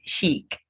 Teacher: you don't say ch, you say sh for these words.